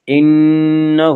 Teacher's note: نون مشدد غنہ ہوگا، غنہ کی مقدار ایک الف ہے۔